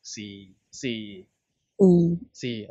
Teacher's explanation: I recommend you remember this as just a very low level tone, which is a very low flat tone. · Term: fourth tone